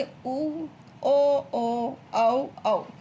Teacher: व्रतमुखी क्या होता है, इसमें होठ गोल होते हैं